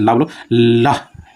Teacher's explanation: उच्चारण में जीवा मसूड़ों को छूती है और हवा का प्रमुख वेग जीवा के आसपास से निकल जाता है। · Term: पार्श्विक व्यंजन